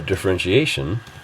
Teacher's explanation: differentiation that t is represented as sh